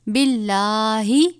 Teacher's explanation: لام سے پہلے زیر ہے، لام کو باریک پڑھیں گے